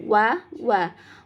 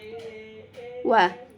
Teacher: Wa ini termasuk huruf asyafatain atau terbentuk dari dua bibir. Nah, ini dua bibir yang membentuk bulatan. Wa. Ya, membentuk bulatan. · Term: huruf waw